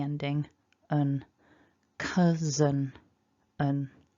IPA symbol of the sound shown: ə